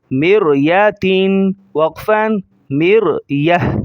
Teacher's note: گول تا جو اینڈ میں آئی ہوئی ہے وہ وقف کے بعد ہا ہو جائے گی۔